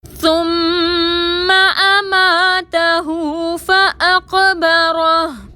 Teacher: میم مشدد پر غنہ کریں گے. اماتہو میں ہا کے اوپر الٹا پیش ہے، دو حرکت کے برابر کھینچ کر پڑھیں گے · فاقبرہ میں قاف ساکن پر کلکلا کریں گے، را پر زبر ہے، را کو موٹا پڑھیں گے. وقف کی صورت میں ہا کو ساکن کر دیں گے.